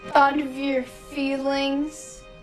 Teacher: the final T in thought has a flap sound, ra, which then joins or connects with the vowel for of. And that vowel for of is a schwa sound, So we say thought'a.